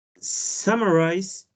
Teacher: Summarize has 3 syllables, and the stress is on the third syllable.